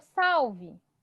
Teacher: Paroxítona, porque o sal é o mais forte, tá bom? Então, se a penúltima é mais forte, então é uma paroxítona.